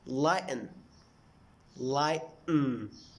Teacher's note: we stop the flow of air in our throat to make the stop T